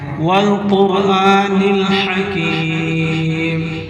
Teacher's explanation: हा को हलक से पढ़ना है और काफ को खींचना है क्योंकि काफ के आगे जाय मद्दा है.